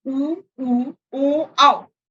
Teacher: इन स्वरों को बोलते समय हमारे होंठ की आकृति बदलती है, वो वृत्ताकार आती है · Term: वृत्तामुखी